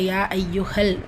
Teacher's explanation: நான்கு ஹரக்கத் அளவு நீட்டம் கொடுத்து ஓதுங்க யால ஷத்தா இருக்கு அழுத்தம் கொடுங்க லாம் சுக்குன் இருக்கிறதுனால மத் உபயோகப்படாது சோ யா ஐயுஹல் சேர்த்துதான் சொல்லுவோம்